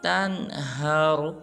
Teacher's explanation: را کو پر ادا کریں گے